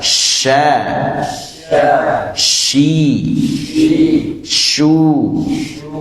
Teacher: nempel ini tingkatannya berbeda ya kalau ja sampai nempel sampai bersentuhan kalau huruf syin itu ngangkat tapi mendekati tidak sampai Menempel dan disertai dengan hembusan udara yang deras s s monggo sya sya syi syi syu syu b b